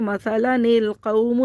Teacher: نون کو ہم پڑھیں گے اور حمزۃ الوصل کو نہیں پڑھیں گے، یہ گر جائے گا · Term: ملانے کی صورت